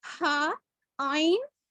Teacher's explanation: ہا آئین یہ مڈل سے نکلتے ہیں تھروٹ کے. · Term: مڈل تھروٹ